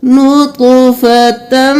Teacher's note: اب یہاں پہ ہم تا کو میم کے ساتھ ملائیں گے اور پھر یہ ہو گیا ادغام مع الغنہ، غنہ کے ساتھ ہم تا کو میم میں مدغم کریں گے